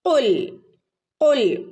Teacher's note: ഖുൽ ഖുൽ ഖാഫ് പ്രത്യേകം ശ്രദ്ധിക്കണം കേട്ടോ. നാവിൻ്റെ മുരട് ഭാഗത്ത് നിന്നാണ് ഖാഫ് വരുന്നത്. അപ്പോൾ ഖുൽ കുൽ എന്ന് ഓതരുത്.